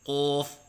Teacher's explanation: ہونٹ گول کر کے پڑھنا جیسے قوف، یہ غلط ہیں